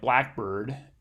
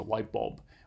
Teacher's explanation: So in light bulb and blackbird, we get stress on the first syllable in these compound words